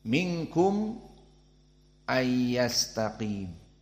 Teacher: Minkum bertemu dengan hamzah, maka ada saqt.